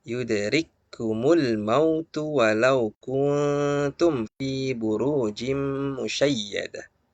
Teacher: Kaf sukun jangan kita baca yudrik kumul, tapi yudrik kumul masuk ke huruf kaf berikutnya. Jadi hamasnya ya pada huruf kaf itu hilang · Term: idgham